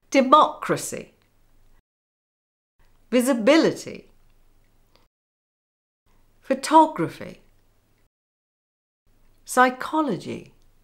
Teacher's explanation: The stress is on the antepenultimate syllable, or in other words, the stress is before the penultimate syllable.